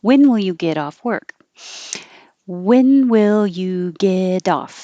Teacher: the only thing changing is the t changing to a d and that connects get off